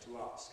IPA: tu ˈɑːsk